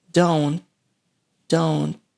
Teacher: have a schwa sound and the final T is stopped don't don't is pronounced with a stop tea as well